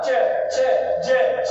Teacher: च छ ज छ आदि तालवे से हो जाते हैं